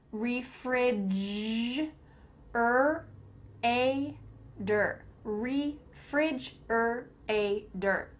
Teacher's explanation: There is a T, and that T is changing to a D.